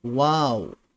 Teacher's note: होठों के गोल होने पर वाव की अदायगी होती है। क्योंकि जो वाव वाव का ताल्लुक हंठ से है।